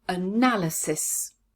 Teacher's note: where is the stress in this word analysis yes it's on the second syllable